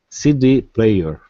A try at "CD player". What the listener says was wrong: Okay, it's not bad. You can be even more, you can stress the first word even more. The CD player. CD player. On the D. CD player. Officially, that's how you're supposed to stress it. Of course, everyone speaks a little differently. So, CD player. CD player. CD. I think I would naturally say CD player on the C.